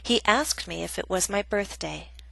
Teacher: Example B is a reported question, a statement, so we have falling intonation, which means our voice goes down.